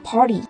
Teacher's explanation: T đứng giữa R và I nên là T đọc thành D và đọc là Party.